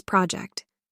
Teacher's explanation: as a verb it's project second syllable stress